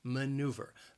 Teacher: maneuver has three syllables and the stress is on that second syllable